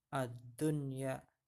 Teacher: Tapi untuk kata ad-dunya ini nun matinya dibaca jelas, idhar mutlak namanya ya.